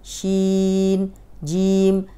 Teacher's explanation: شین میں جو ہے وہ شی کو لمبا کریں گے، ناک میں آواز نہیں جائے گی